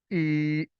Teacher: आप एक अलिफ के बराबर इसको लंबा करते हैं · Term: मद्दे असली